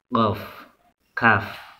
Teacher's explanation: Makharijul huruf qaf yaitu pangkal lidah bertemu dengan langit-langit atas